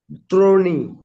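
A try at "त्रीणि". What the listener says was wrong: দ্রোণী না তো, এটা ত্রিণী। ত্রিণী তরে ফেলা রস্বইকার, তরে ফেলে দীর্ঘিকার।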